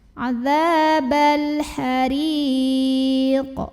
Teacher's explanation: Jadi kalau berhenti di sini, ra-nya ini boleh panjang 2, 4 atau 6 harokat asal konsisten dalam 1 kali bacaan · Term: mad arid li sukun